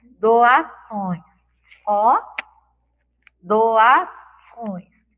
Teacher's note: Faz uma pressão para sair o ar, a sílaba, pelo nosso nariz. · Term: som nasal